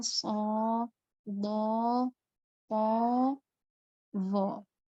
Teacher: penyebutan so yang bagian sisi-sisi lidah kita itu terangkat kemudian menyentuh ke langit-langit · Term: itbaq